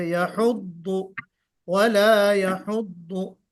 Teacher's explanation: वला यहुद्दु में आपने दाद जरा अच्छे अंदाज से निकालिए, दाद में तशदीद भी अच्छे से जाहिर कीजिए